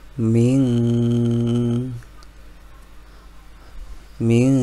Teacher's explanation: ada nun sukun bertemu dengan dalal itu dibaca ikhfa maka bacaannya agak samar